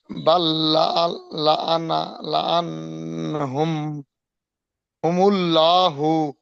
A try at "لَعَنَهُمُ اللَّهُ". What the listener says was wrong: হুমুল্লাহু। লা নয়, ল। হুমুল্লাহু।